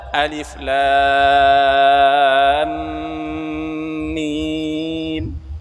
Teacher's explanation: Di dalam huruf ini juga ada dengung ghunah. Ada antara mim dengan mim. Lam mim terjadi idgham.